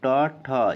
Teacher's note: किस समूह के वर्णों का उच्चारण स्थान मूर्धा है ट वर्ग वाला मूर्धा होना चाहिए